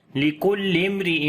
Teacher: ساکن کے بعد جو ہے وہ را ہے، تو یہاں پر میم کا اظہار کریں گے، یعنی اظہار شفوی ہوگا، میم کی آواز ظاہر کر کے پڑھیں گے